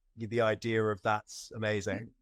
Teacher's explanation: But we will use an R if it's going into another word that starts with a vowel. And British people do this thing where we put in an R where there isn't one even in the spelling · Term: intrusive R